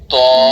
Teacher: র 11 নং মখরাজ, জিহ্বার আগা সামনের উপরের দুই দাঁতের গোড়ার সঙ্গে লাগাইয়া